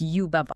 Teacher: Also, Well, the baba part is not pronounced like a sheep going ba. It is a rhythmic, very staccato ba-ba. The guide compares the cadence to the word papa in Spanish.